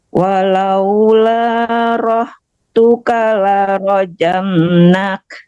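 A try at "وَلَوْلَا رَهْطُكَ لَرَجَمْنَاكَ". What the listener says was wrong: Tunya nggak panjang. Walaula rahtuka la tunya nggak panjang Bu.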